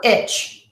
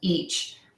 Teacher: Common mistakes that I hear, I will hear instead of the long E sound, I will hear my clients say the short I sound